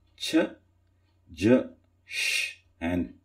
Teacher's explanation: it is not only the alveolar Ridge but also the palate